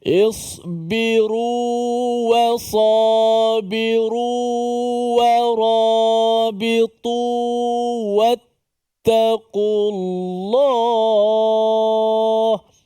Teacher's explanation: kita betul-betul panjangkan suara dengan kadar 2 harakatain, barulah kita ambil wa. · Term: mat tamkin